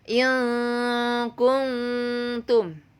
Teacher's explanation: Ini nun mati menghadapi kaf, ini nun mati menghadapi ta. Jadi dibacanya samar. Jadi terdengar bunyi ang atau an atau an.